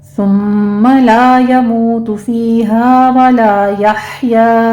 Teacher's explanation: सुम्मा में सा को नरमी से पढ़ते हुए मीम मुशद्दद है, गुन्ने वाजिबा है, 2 काउंट कर लेंगे। ला यमूतु में अलिफ मद्दा वाव मद्दा है, 2 काउंट करेंगे।